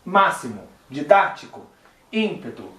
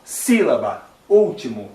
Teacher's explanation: Todas as palavras, então, que a antepenúltima sílaba, né, é a mais forte, são proparoxítonas e todas elas vão ser acentuadas, tá certo?